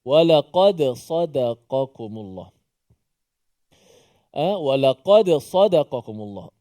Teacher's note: Dal itu dimatikan dan kita baca dal yang dimatikan, dan dal bila mati qalqalah lah, ada qalqalah.